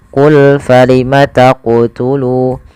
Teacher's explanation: Qalqalah artinya memantul. Maka ketika melafalkan huruf qaf di sini harus memantul